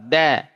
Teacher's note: Dari ujung lidah bertemu dengan pangkal gigi seri atas. Ketemu pangkalnya, bukan ketemu tengah gigi atau ujung gigi apalagi keluar. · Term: huruf dal